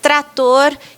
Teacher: esse R no meio do grupo fica tão difícil que aí vai sair um tator